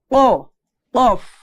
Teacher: তাহলে উচ্চারণটা কি হবে? অ, একদম জিহ্বার গোড়াটা উপরে তালুর সাথে লাগাতে হবে